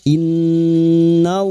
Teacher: lam jalalah yang didahului fathah dibaca tafkim